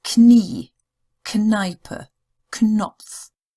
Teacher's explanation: KN. Unlike in English, we don't have a silent N. It gets pronounced. So it's Knie, Kneipe, Knopf.